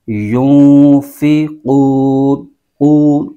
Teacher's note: رزقناہم، وَمِمَّا رَزَقْنَاهُمْ يُنْفِقُونَ، يُنْفِقُونَ، یہاں پر نون ساکن ہے اور نون ساکن کے بعد حرف فا ہے، تو یہاں پر اخفا کا قاعدہ لگ رہا ہے، یعنی یہاں پر غنہ کر کے پڑھیں گے ، يُنْفِقُونَ، قوف نقطے والا قوف ہے اس کو موٹا کر